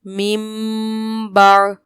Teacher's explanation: تو ہم نے پڑھا تھا کہ اقلاب کیا جائے گا، یعنی نون کی آواز کو میم سے بدل کے پڑھنا ہے